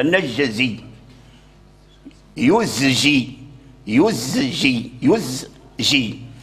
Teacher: يزجي فلابد هذه الكلمه لابد من المحافظه على على على الزاي يخرج الزاي من مخرجه ويعطيه الصفير ثم عاد ينطق بالجيم والا والا اللسان يسرع الى ان يجعل الزاي جيما او يخلطه